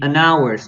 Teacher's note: we don't pronounce the H